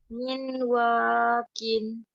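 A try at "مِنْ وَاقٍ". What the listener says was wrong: Bukan min. Miu. Bacanya miu.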